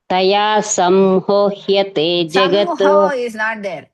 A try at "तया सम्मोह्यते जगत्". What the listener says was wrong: Samho is not there. Samho is not there. Sammo.